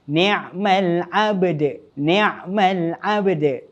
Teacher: Ni'mal abd. Dan jangan lupa untuk lantunkan huruf dal di akhir kalimah yang telah disukunkan tadi dengan lantunan qalqalah kubra